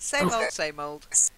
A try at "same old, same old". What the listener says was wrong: First one good. Second one going back to your sem sound. I don't know if Monique agrees with me, but same old, same old. So that long A.